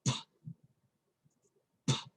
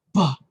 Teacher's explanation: Or the letter P, as in P, Peter P, Puppy. So you don't feel the vibration with the letter P as you do the letter B